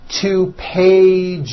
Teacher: One page becomes two pages with that voiced Z.